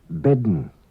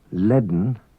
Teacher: An unwritten D is pronounced before N in some Manx words.